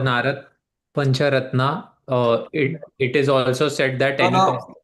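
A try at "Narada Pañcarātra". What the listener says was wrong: No, not Pancharatna, Pancharatra.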